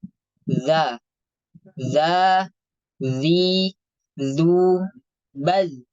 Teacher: ujung lidah menempel ke ujung gigi seri atas. · Untuk pergerakan pangkal lidahnya dia istifal, turun.